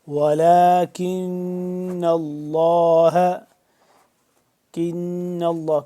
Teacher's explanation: کاف کو باریک اور نون کے اوپر مشدد، نون مشدد ہے تو اس کے اوپر ہم کیا کریں گے، یہاں پہ غنہ کریں گے.